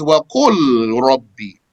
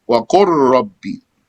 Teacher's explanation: The origin is وَقُلْ رَبِّ. The lam and the ra come from the same exit, so they were merged.